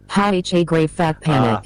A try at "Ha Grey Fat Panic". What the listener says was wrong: What happened there, as she was trying to speak, she turned French and put an accent on the second A in ha. So it was meant to be ha ha, Fat Panic.